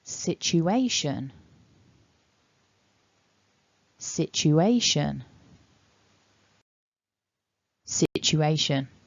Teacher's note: So sich it's a ch, but here it's a sh, so it's very similar. So our final syllable, shun, is weak, and it's weak because we've got that schwa sound in there.